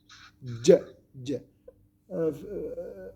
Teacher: Le milieu de la langue. Avec le milieu du palais. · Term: jim